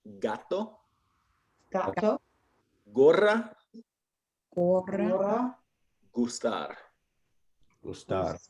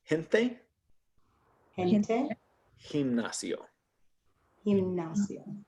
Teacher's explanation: The soft sound sounds more like our H.